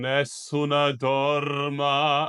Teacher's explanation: I know some Italians of old school will sing Nessuna dorma and put that little schwa in the end. It's kind of considered to be bad Italian, even though Italians sing it.